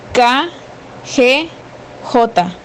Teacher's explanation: lengua choca contra el paladar por ejemplo wl ñ y velar la lengua debe colocarse sobre el velo del paladar